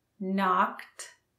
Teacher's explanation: Knock, knocked, knocking. And notice the D on knocked sounds like a T.